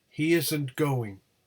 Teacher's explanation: the first syllable of going is the nucleus